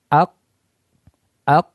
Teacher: Tidak ada nafas yang keluar ketika diucapkan huruf qaf. Artinya ketika kita mensukunkan huruf qaf, maka dia tertahan.